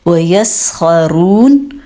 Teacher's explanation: یہاں پہ سین کو اچھا سا ٹائم دینا ہے، خا موٹا کرنا ہے، را کو بھی موٹا کرنا ہے، اور آخر میں نون کو ساکن کرنا ہے۔